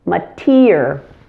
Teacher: The first syllable has a schwa sound, and primary stress is on the second syllable, mater. There is a fully pronounced firm T, and the ER is pronounced in an unexpected way, ear, just like your ear here, mater.